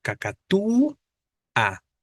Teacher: las tres palabras tienen su sílaba tónica en la penúltima